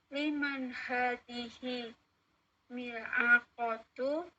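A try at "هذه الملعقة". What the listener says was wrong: Hadhil mil'aqatu ada alif lamnya. Hadhil mil'aqatu litolibi.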